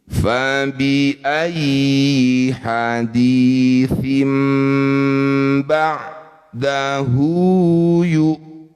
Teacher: Kalau tanwin atau nun sukun bertemu ba namanya iqlab. Bunyi kasrat tanwinnya tukar dengan mim.